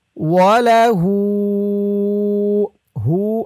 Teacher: হু এখানে 3 আলিফ টান মধ্যে মুনফাসিল